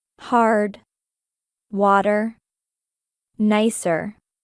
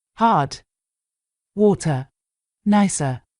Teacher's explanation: just pronounce that R if you want to sound more American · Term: rhotic accent